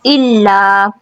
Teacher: لام بھی باریک رکھنا ہے، مد منفصل ہے یہاں پہ